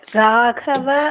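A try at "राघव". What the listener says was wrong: ராகவ இல்ல, ராகவ. ஹாவே கிடையாது. கா தான் போடுவா. நீங்க ஹா சொல்றேன். அது ராகவ எப்படி சொல்வீங்க? ரா க நாலாவது க. இது ஏன் ராகவன்னு சொல்லணும்? ஹாவே வரக்கூடாது.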